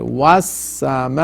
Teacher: you make a whistling sound because sin is harfe safir